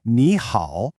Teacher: The first word, ni, changes to a second tone, so everyone actually says ni hao.